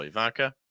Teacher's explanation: Stress that second syllable.